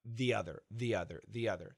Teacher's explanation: if we have the word the and the next word begins with a vowel sound we usually say thee